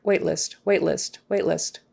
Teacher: That T is going to be very short.